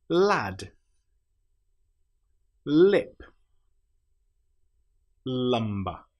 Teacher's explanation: We put our tongue up behind our top teeth and then we flap it down. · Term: letter L